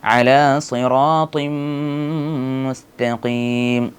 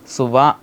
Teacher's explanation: സ്വാദ് ഉച്ചരിക്കുമ്പോൾ നാം ശ്രദ്ധിക്കേണ്ടത് സ്വാ എന്ന് ചുണ്ട് കൂർപ്പിക്കാൻ പാടില്ല അതുപോലെ സുവ എന്ന് രീതിയിൽ പറയാൻ പാടില്ല അലാസി എന്നാണ് പറയേണ്ടത് രണ്ട് സീനിന്റെയും